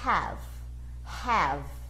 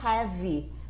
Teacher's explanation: o V termina aqui no V, não tem mais nenhuma vogal, porque a pronúncia adequada é have.